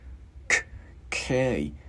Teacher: chữ K mình bật cổ